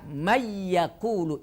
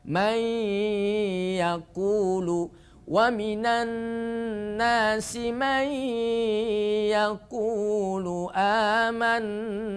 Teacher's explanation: namanya idgham bighhunah idgham artinya masuk bighhunah artinya dengan berdengung atau dengan dengung dicampur dengan suara hidung agak sengau suaranya